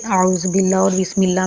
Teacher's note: اعوذ باللہ اور بسم اللہ میں لفظ اللہ کو زیر کی وجہ سے باریک پڑھتے ہیں۔